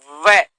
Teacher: वह जो है यानी कि ओष्ठ और दंत दोनों के मिलने पर होता है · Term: दंतोष्ठम